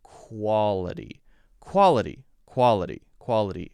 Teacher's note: for this one q-u-a like k-w-a quack quality quality and actually we don't say the full ah sound blends into the l so it's more like all quality quality quality quality and then · we don't say the full ah sound. It blends into the L, so it's more like all.